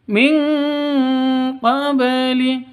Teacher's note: Nun mati bertemu dengan qaf. Cara bacanya samar disertai dengung, siap-siap ke huruf qafnya. Nun matinya ditambah dengan ng, berubah menjadi ng.